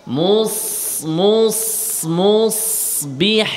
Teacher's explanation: মুস ঠোঁট গোল হচ্ছে কেন? মুস মুস মুসবিহিন, ঠোঁট উপরের দিকে উঠে যায়